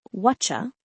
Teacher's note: Listen for the magic ch sound when T and Y sounds meet.